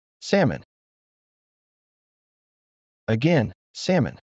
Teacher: Just go straight from the A to the M. · Remember, the key is to completely skip that L.